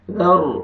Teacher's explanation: سے ذال ہے، یہاں پہ آپ نے اخفاء کرنا ہے، ذر، را کو پر کریں گے کیونکہ را ساکن اس سے پہلے زبر ہے